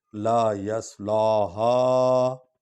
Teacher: ہا کو لمبا کریں کیونکہ الف پر مد ہے، اور ہا کو سینے کی ہڈی سے نکالنا ہے، اس کا مخرج ہے